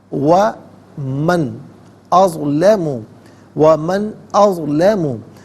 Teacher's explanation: نون ساکن کو بغیر اخفاء کے، بغیر غننے کے پڑھیں گے